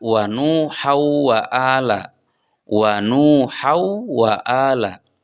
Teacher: di sana ada tanwin pada huruf ha kemudian diikuti oleh wau dan Wau itu adalah huruf idgam sehingga tanwinnya dimasukkan ke dalam wau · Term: idgham bighunah